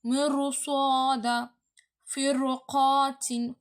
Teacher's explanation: நல்லா குமிச்சு கடினமாக நான் ஓதணும்னு சொன்னேன். தடிமனாக அந்த ரா வந்து தெரியணும். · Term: வள்ளீனமாக